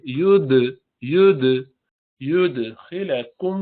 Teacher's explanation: وَيُدْخِلَكُمْ، وَيُد دال پہ قلقلہ کریں گے، وَيُد قلقلہ، یود دیکھیے، یود ید ید خالی کہتے ید، تو زبان کی نوک اوپر جا کے لگ گئی، تو قلقلہ کرنے کے لیے اس کو دوبارہ چھوڑ دیں، الگ کر دیں